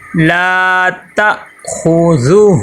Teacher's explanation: لام کو ایک الف کے برابر لمبا کریں گے کیونکہ لام کے آگے الف مدہ آ گیا